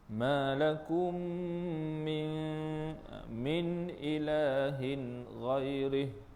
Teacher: cara bacaannya adalah dengan kita dengung dua harakat pada makhraj mim lah. Ma lakum min ilahin ghairih. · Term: Idgham mithlain